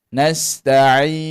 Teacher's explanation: hujung lidah kita sentuh pada hujung gigi kacip atas, kemudian kita tolak suara di hidung. Jadi pada huruf nun tu mesti kena ada bunyi n di belakang. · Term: dengung satu harakat